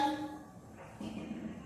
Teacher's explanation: Disamarkan ketika membaca wala antum, bukan antum tapi disamarkan huruf ta. Wala antum, di situ masuk dengung. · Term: ikhfa